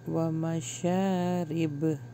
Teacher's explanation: با کے اوپر جب ہم رکتے ہیں تو یہاں پہ ہم قلقلہ کرتے ہیں